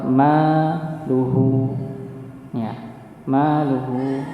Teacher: Ma-nya 2 harakat dikarenakan ya fathah bertemu dengan alif, maka dipanjangkan 2 harakat